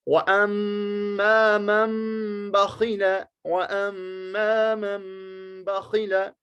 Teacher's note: اگرچہ یہاں میم لکھا ہوا نہیں ہے لیکن میم ہی کو ہمیں پڑھنا ہے نون ساکن کے بجائے